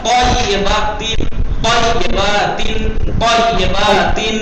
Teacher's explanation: تو کی آواز سخت اور موٹی اور منہ بھر کے ادا ہوتی ہے. تو موٹی اور منہ بھر کے.